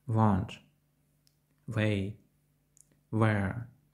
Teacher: в він м'який не мов не до кінця вимовлений звук в він вимовляється як щось середнє між українськими звуками у та в